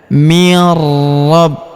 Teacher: Maka nun sukunnya melebur ke huruf ro yang berharakat tasydid. Kita tahan dan kita tekan ya. · Huruf B kita tahan dan tekan karena terdapat tanda tasdid di atasnya